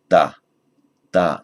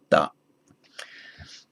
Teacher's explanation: called dental because the tongue is against the ridge at the back of the teeth. So rather than the retroflex bent back, the tongue bent back to touch the hard palate, da. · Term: dentals